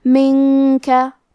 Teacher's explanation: کاف حروف الاخفاء میں سے ہے تو ہم یہ حکم کو غنہ کے ساتھ ادا کریں گے